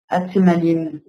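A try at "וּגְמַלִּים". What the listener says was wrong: Vagemalim. Un guimel ici. Attention.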